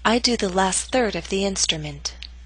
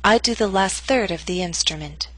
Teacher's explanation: primary stress is in the middle of the statement your voice will continue to fall after the word third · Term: falling intonation